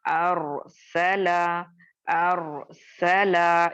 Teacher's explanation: सिर्फ रॉ को मोटा पढ़ना है, सीन और लाम बारीक हरूफ में आते हैं तो इनको हम बारीक ही अदा करेंगे और रॉ को मोटा करेंगे।